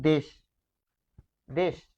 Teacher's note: দেশ লিখছি হসন্ত ছাড়া কিন্তু যখন বলছি তখন কিন্তু দেশ দেশ থেমে যাচ্ছি